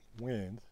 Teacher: there is a nasal vowel in that wind, which is not something that you would expect.